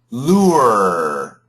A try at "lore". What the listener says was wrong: Not too bad. The R sound is a little bit weak, but it sounds better.